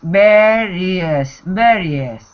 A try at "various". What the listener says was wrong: So it looks like var, but it's not var, it's ver. Various.